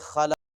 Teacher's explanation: خا کو بھی موٹا کریں گے، قاف کو بھی